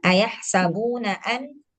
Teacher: Yang an ini didengungkan. Jadi agak lama ditahannya. Ayah sabuna an agak lama ditahan.